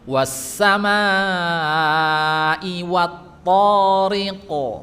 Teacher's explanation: huruf qaf itu di belakang, sedikit dari pertemuan antara langit-langit yang lunak dan keras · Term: makhraj huruf qaf